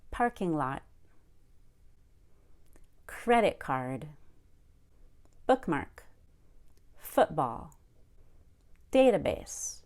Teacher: we also have two or three word nouns called compound nouns we always stress the first word in such a compound noun parking-lot credit-card bookmark football database notice I did not say database